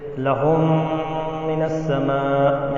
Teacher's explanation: میم ساکن ہے اس کے بعد میم آ گیا تو لہم، اس میں ادغام ہوگا